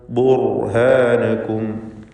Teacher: സാക്കിനത്തായ റാഉം തൊട്ടുമുമ്പ് ദമ്മുമാണ്. റാഇനെ തടിപ്പിച്ച് സ്വരഭാരത്തോടെ ഉച്ചരിക്കുക. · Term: തഫ്ഖീം